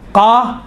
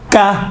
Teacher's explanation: زبان کی جڑ اگر نرم والی جگہ، اوپر والی نرم والی جگہ سے جب ٹچ ہوتی ہیں تو قاف نکلتا ہے، سخت والی جگہ سے ٹچ ہوتی ہیں زبان کی جڑ تو کاف نکلتا ہے